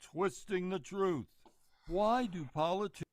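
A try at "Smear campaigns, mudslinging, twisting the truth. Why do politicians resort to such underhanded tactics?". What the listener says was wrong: It's very slow. It's lethargic. It's dramatic. It's theatrical. It's melodramatic. It's not authentic, and so that person's out.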